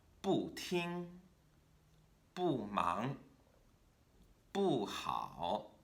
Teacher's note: a fourth tone has to start very high before coming back down